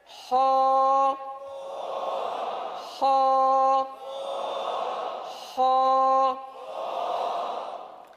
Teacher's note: سب سے اوپر والے حصے سے ہو ادا ہوگا